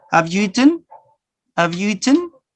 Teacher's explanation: The first have, I pronounce it in a weak form.